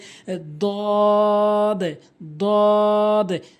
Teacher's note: জিহ্বার গোড়ার কিনারা উপরে মারির সঙ্গে লাগাতে হবে